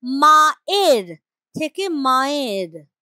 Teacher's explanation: আমাদের জীব উচ্চারণটাকে সরল করে সহজ করে নেবার জন্য একটা অন্তস্থ নিয়ে চলে এলো মাঝখানে এটা যেমন আছে কিন্তু উচ্চারণটা অনেক সহজ তরল হয়ে গেল মায়ের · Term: অন্তস্থ শ্রুতি